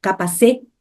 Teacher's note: Quando a gente termina as palavras com ti, di, ela, na transcrição fonética, é como se fosse um T, um S e um I junto.